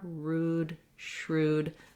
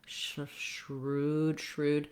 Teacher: keep your tongue mostly in the R position as you're saying the SH sound, which is why it would help to start with the R, rude, shrewd, so your tongue is ready and feels that R position.